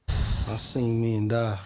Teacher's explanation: >> Southern diff thong flattening quality. Listen to how he says die as dah here. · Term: Southern diphthong flattening